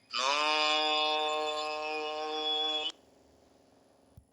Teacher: চার আলিফ টানতে হবে, জিহ্বার আগা তালুতে লাগবে।